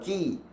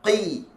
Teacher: sifat huruf kaf adalah bunyi merendah. Ki. Huruf qaf, qi. Dia bunyi meninggi.